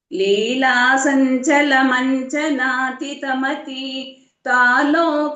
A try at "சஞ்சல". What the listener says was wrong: சஞ்சலம்னு சொல்லக்கூடாது சஞ்சல ரண்டுமே சதான் போடணும்